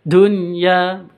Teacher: non sukun bertemu dengan ya, ini bukan idgham bi gunnah, bukan didengungkan, tapi dijelaskan atau seperti izhar fi kalimati wahidah namanya.